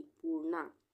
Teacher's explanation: पू के बाद आधा र का उच्चारण आ रहा है, तो यहाँ पे रेफ की मात्रा न पे लगेगी, पूर्णा।